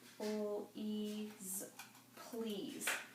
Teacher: that S is one of those ones that kind of makes the Z sound. It's not really obvious, and you have to kind of adjust your voice when you read.